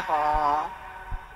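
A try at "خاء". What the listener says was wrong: খ, আর একটু টান দেন, একালি পরিমাণ টান দেন।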